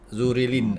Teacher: bila dah yanzuril, tak ada dah bunyi i dah. Dia i tu satu je. Zurilin. Falyanzuril gitu je.